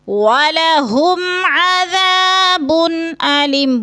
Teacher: ادھر غنہ نہیں ہے، اظہار شفوی ہے، لفظ کو ظاہر کر کے پڑھیں گے۔ وَلَهُمْ عَذَابٌ أَلِيمٌ، بن پہ بھی غنہ نہیں کرنا، ادھر اظہار ہلکی ہے، اس کو صاف کر کے واضح کر کے پڑھنا ہے، جیسے عذاب علیم۔